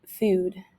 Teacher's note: the oo sound is produced in a fronted manner this means that they pronounce a single vowel with the tongue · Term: fronted vowels